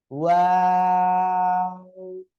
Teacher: এটা বলে আমরা একটু টেনে পড়বো তিন আলিফ, তারপরে আবার দুই ঠোঁট গোল করব